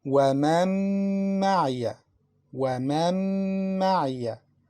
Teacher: we don't pronounce the first letter, Noon, but we pronounce Mim twice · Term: Noon is mixed in Mim